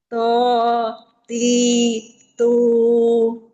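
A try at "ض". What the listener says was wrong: tapi belum idbaq jadi bagian permukaan lidah belum melekat ke langit-langit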